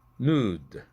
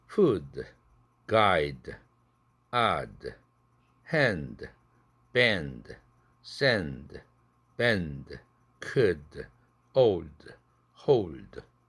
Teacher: 아주 부드럽게 드 사운드가 약하게 파열됩니다.